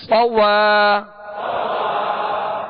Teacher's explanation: ہونٹوں کو گول نہیں کریں گے، صاد کو پر پڑھیں گے، سیٹی کی آواز اس میں پیدا ہوگی